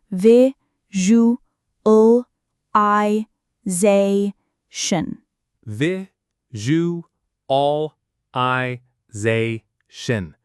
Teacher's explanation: The stress is on that zay syllable